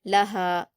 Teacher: लहा में छोटी हा है तो उसको हलक से अदा नहीं करेंगे